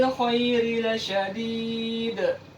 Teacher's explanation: kita baca dengan Qalqalah Kubro karena kita berhenti disini sehingga bunyi qolqolah yang dikeluarkan lebih besar